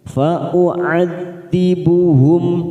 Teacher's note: Fa'u'ad hati-hati ada hamzah duma dan ain fathah. Jangan samakan, ain ini lebih pada ketenggorokan.